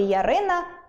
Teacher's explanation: у слові “Ярина” ми чітко чуємо [й] та [а]